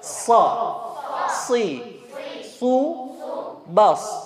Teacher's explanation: Sa di ujung lidah sama dengan sa, cuma ini isti'la, hurufnya tebal.